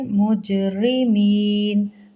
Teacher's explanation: مجرمین جیم پر جزم قلقلہ ہوگا